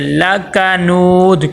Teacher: لکنود، آگے دیکھیں واو مدہ ہے، واو مدہ کو ایک الف کے برابر لمبا کریں گے اور آگے وقف کریں گے۔